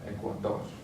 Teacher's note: And finally, ends with an R, so we're going to stress the last syllable